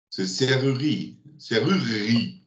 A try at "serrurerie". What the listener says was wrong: Ouais, pas mal.